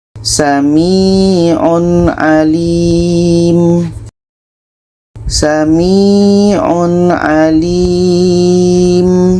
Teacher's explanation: tanwin jelas Ain jelas dan tidak ada dengung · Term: izhar halq, izhar halqi